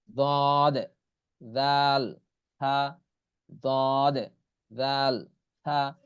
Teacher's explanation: জিহ্বার আগা সামনের উপরের দুই দাঁতের আগার সঙ্গে লাগাইয়া উচ্চারণ হবে